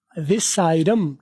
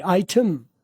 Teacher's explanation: British کی طرف جاؤ گے تو ٹی کی آواز پھٹ جائے گی